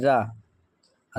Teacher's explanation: रा जो है वो प्रकम्पित व्यंजन है